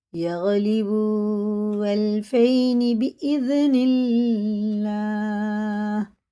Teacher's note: اللہ کا لام زیر سے تو باریک پڑھیں گے